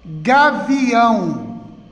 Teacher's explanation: que a vi ão Olha o aí como sílaba mais forte última sílaba mais forte sílaba tônica oxítona